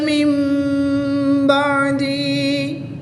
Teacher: نون ساکن کے بعد با آ جائے تو اقلاب ہوتا ہے، نون ساکن کو میم سے بدل کر غنہ زمانی کر کے پڑھیں گے